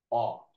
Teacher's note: তাহলে উচ্চ সংবৃত পশ্চাৎ ধ্বনি হল উ এখন অকে কি বলব নিম্ন মধ্য অর্ধ বিবৃত পশ্চাৎ ধ্বনি হচ্ছে অ